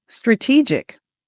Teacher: The emphasis is on the second syllable. So, make sure you make that long e sound.